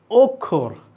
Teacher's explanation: অ এর উচ্চারণটা আমি ও এর মত করছি লেখা আছে অ কিন্তু উচ্চারণ করছি ও